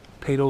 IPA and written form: ˈpiːtoʊ (Peyto)